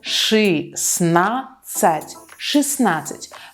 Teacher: We don't pronounce the first letter T.